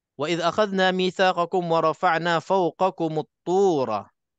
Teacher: Sabdu di atas ta tak boleh dengung. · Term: tak dengung